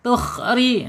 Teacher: Kemudian lanjut tukhriju, ri ya, awas jangan, nggak boleh tebal ya, karena ro ini kasroh, harus dia tipis tarkik ya